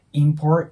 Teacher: ▁って発音される方ももちろんいるんですけど、 多くのアメリカの方は▁important▁っていう感じで、そのままんの音に聞こえることが多いです。